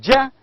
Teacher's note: ja is palatal affricate voiced sound